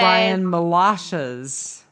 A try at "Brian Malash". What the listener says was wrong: Well, and I think it's Malash, because he says Malashes rhyme with galoshes, but there's no S on the end